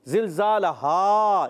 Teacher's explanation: और हा का मखरज हलक का नीचे वाला हिस्सा